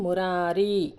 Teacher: ము అని అంటే పొట్టి లెటర్ అంటే ఒక మాత్ర కాలంలో పలికేది రారి ఇది రెండు మాత్రల కాలంలో పలుకుతుంది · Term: యగనం